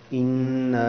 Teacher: یہاں میں نے غنہ سا کیا ہے کیونکہ نون کے اوپر شد ہے